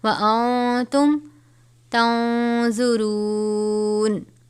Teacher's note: نون ساکن کے بعد تا ہے، حرف اخفا میں سے اخفا کریں گے، اخفا کا قاعدہ لگے گا.